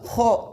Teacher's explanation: Diangkat pangkal lidah sehingga dia itu suaranya yang keluar itu tebal. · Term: isti'la